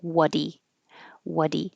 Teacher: now it's between two vowels and it changes to a D